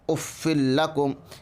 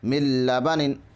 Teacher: ادغام بلا غنہ میں ناک میں آواز لے جائے بغیر پڑھیں اف لکم۔ ادغام بلا غنہ ہو رہا ہے کیونکہ ادغام بلا غنہ کے حرفوں میں سے 2 حرفوں میں سے لام ہے، اس لیے ادغام بلا غنہ ہوگا۔